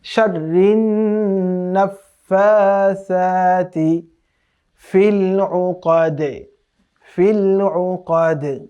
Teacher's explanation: এখানে নুনের উপরে তাসদীদ থাকার কারণে ওয়াজিব গুণনা করতে হবে,